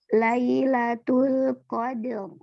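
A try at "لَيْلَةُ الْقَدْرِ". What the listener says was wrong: Jangan der. Lailatul Qadar.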